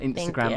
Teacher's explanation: the emphasis on the last syllable of Instagram